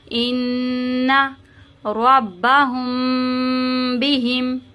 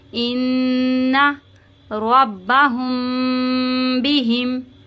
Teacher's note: میم ساکن کے بعد جب با آتا ہے تو ہم یہاں پہ گنہ کر کے پڑھتے ہیں ، ان ربہم بہم، یہاں پہ گنہ اس طرح سے کریں